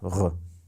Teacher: Эти двойные буквы обозначают, соответственно, увулярный смычный, вот такой звук «х» в иронском, а в дегорском «г» и твердый знак обозначают увулярный звонкий фрикативный, который похож на французское «р», то есть «р».